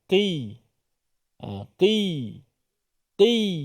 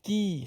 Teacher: Walaupun dia baris bawah sifatnya tebal tapi baris bawah ni tidaklah setebal baris atas Q bukan Q tapi kita sebut Qi ketebalnya akan kurang sedikit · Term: qaf baris bawah